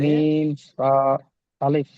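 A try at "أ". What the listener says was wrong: আলিফ নয়, দেখেন আলিফের উপরে হামজা রয়েছে ছোট্ট মতো, দেখতে পাচ্ছেন কি?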